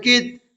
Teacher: تا میں قلقلہ نہیں ہوگا کیونکہ تا پر جزم تو ہے لیکن حروف قلقلہ میں سے نہیں ہے